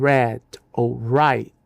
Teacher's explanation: se o R vier no início da palavra como red ou right, o britânico o pronuncia com toda a clareza